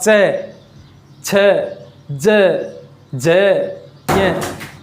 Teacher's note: फेफड़ों से निकलने वाली जो प्राणवायु है उसका जो प्रेशर है वो तालु पर अधिक रहेगा, यानी गले पर नहीं रहेगा। जब बोल करके देख सकते हैं आप, च, छ, ज, ज, ये, तो इस प्रकार से तालु पर इसका प्रेशर अधिक रहता है। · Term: तालव्य वर्ण